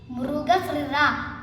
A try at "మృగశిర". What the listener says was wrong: శ్రీ కాదు, షి. షి. రా. యా కాదు. మృగ. శిర.